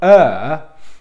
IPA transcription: ɜ: